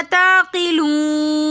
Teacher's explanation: تعقلون میں بھی واو ساکن اور اس سے پہلے پیش تو واو مدہ ہونے کی وجہ سے ہم اس کو ایک الف کی مقدار کھینچ کر پڑھیں گے. پھر واو مدہ کے بعد آگے نون ساکن آ رہا ہے تو حالت وقف میں اس کو ہم تھوڑا زیادہ کھینچ کر پڑھیں گے